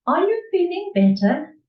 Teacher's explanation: intonation I will say to you are you feeling better and it goes up as opposed to a statement where the intonation goes down